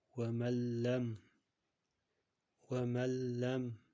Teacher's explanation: Ya'ni g'unna bo'lmayapti, faqat lamni tashdid bilan ikkita qilib o'qiyapmiz. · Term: g'unnasiz